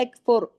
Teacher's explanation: اب فا کے اوپر پیش ہے، اس کے اثر پڑ رہا ہے، راہ ہیوی ہو جائے گا، موٹا ہو جائے گا، یکفر، باقی تمام باریک حروف ہے۔